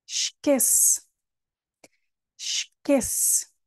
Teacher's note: aqui temos o es outra vez no início da palavra Espero que tenham dito sh